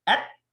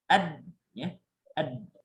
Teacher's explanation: Kalau ta itu hamas. Ketika sukun dia ada udara ya, jariyatun nafs. Udara yang mengalir. Tapi kalau dal ya, dia yasuddun nafs. Nafas itu tertahan.